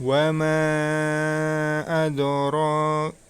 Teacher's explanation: huruf mim disitu dibaca panjang oleh dua harokat empat harakat atau lima harokatnya